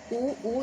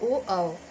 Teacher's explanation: जिन स्वरों के उच्चारण में ओष्ठ गोलाकार हो वो समृद्ध स्वर के अंतर्गत आता है